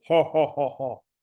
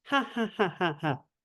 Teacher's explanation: This noise, depending on where you live, will sound, if you're closer like Kirkuk in Iraq, it will sound more like the Arabic ha, which affects the vowels around. It makes it deeper sounding